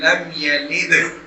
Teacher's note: اللہ الصمد, اللہ ہو میں ہو ہوئی ہے اور صاد کو موٹا کر کے پڑھنا ہے, اور آگے دال جو اینڈ والی دال ہے اس پر قلقلہ کرنا ہے, یعنی آواز کو ہلا کر پڑھنا ہے